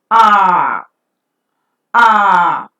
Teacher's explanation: If you look at the diagram that is given in the extreme right corner, you could find that the vowel is articulated when the tongue is almost at rest in the open position. It's the back part of the tongue that is used, and the lips are unrounded when the sound is pronounced.